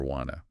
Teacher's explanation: want to almost universally becomes the snappier wanna